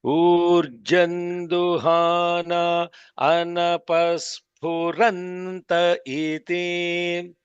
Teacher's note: The swaritam is on ra, not on the sphu.